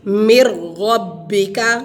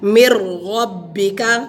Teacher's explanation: من ربک ایک حرف کو دوسرے حرف میں داخل کریں گے، یعنی نون ساکن کو را کے ساتھ ادغام کریں گے اور غنہ کے بغیر ملائیں گے